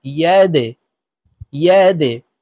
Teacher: দাল কলকলার হরফ নিচের দিকে ধাবিত করে ধাক্কা দিয়ে উচ্চারণ করব। প্রিয় দর্শক, এখানে দেখুন এই যে দালের নিচে নিচের দিকে ধাবিত করা ত্রিভুজ চিহ্ন দেওয়া আছে, তো আমরা এই দালকে নিচের দিকে ধাবিত করে ধাক্কা দিয়ে উচ্চারণ করব, ইয়াদে, ইয়াদে।